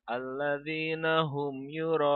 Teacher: ketika membacanya itu harus sepanjang enam harakat ini namanya mad'u wajib muttasil